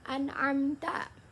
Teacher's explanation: cara baca izhar khalqi ini harus jelas dan tidak boleh didengungkan sama sekali karena makhrajnya atau tempat keluar hurufnya ini berasal dari tenggorokan